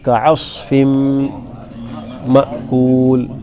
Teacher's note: کعصف میں کاف بھی باریک پڑا جاتا ہے، عین بھی باریک، فا بھی باریک، لیکن صاد موٹا پڑا جاتا ہے، تو کعصف مأکول۔